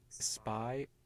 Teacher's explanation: there's no burst of noise following the release of the lips, because the P in spy was not aspirated.